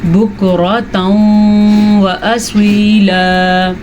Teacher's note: بُكْرَةً وَأَصِيلًا، یہ ہے جناب ادغام بالغنہ، کیونکہ تنوین کے بعد یمون میں سے واو آیا ہوا ہے تو یہاں پہ ادغام بالغنہ ہوگا